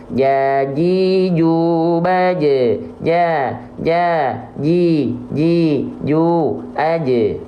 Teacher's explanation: adalah jahar ya tertahan nafasnya Caranya gimana biar enggak bocor nafasnya lafalkan Jim dari makhrojnya dari tengah lidah diapain nempel ke atas · pastikan huruf jim itu tengah lidah teman-teman ya, nempel ke langit-langit, nggak bercelah, tidak ada celah di antara mereka, nggak ada jarak di antara mereka.